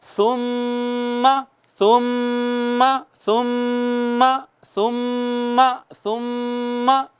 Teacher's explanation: ناک میں آواز لے جا کر، پیور ناک میں آواز لے جا کر، تھک آواز، گہری آواز کے ساتھ ایک الف کے برابر گنگنانا، اس کو غنہ کہتے ہیں۔